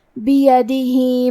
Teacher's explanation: کلمت بیدہ میں با کے نیچے زیر ہے، یا پہ زبر ہے اور دال کے نیچے زیر ہے، تو ہم یہ تینوں حرکات کو ظاہر کریں گے اور اسے برابر سے ادا کریں گے۔ بیدہ، آخری میں ہا کے نیچے کھڑی زیر ہے، یہاں حکم ہے مد صلہ صغریٰ تو ہم اپنی آواز 2 مد کے برابر لمبی کریں گے